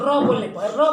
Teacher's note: इसको जो है प्रकंपित का मतलब जब र का उच्चारण करते हैं हम लोग, तो जो है जीभ जो है प्रकंपित यानी कंपन पैदा होता है जीभ में।